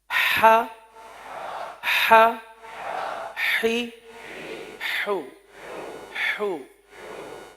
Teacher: اس کا جو مخرج ہے وسط حلق، یعنی حلق کا درمیان، حلق کا درمیان، یہاں سے یہ حرف ادا ہوتا ہے. تو پہلے حرف کی ادائیگی، پھر اس کے بعد حرکت کی ادائیگی.